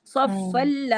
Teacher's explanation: صفل بغیر غنہ کے پڑھ رہے ہیں. ٹھیک ہے. ناک میں نہیں آواز جا رہی. صفل تو وہ لام کو بس ہم نے دو جس طرح شد والے حروف ہوتے ہیں اسی طرح ہی پڑھنا ہے.